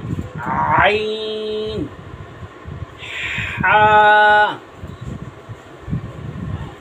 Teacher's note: আইন এবং হা হলকের মধ্যখান থেকে, আইন হবে চাপ দিয়ে আর হা হবে শোষণ করে, আইন হা।